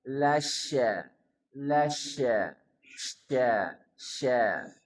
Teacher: Kemudian kata berikutnya la syadid ada syin pastikan ada tafasyi menyebar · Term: tafashi